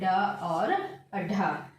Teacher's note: उच्चारण स्थान के आधार पर जो मूर्धन्य व्यंजन है वह है ड और ढ